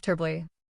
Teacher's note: The or in the middle almost disappears.